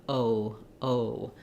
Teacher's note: O is a diphthong we Glide from that rounded o to a more LAX and slightly more closed jaw uh sound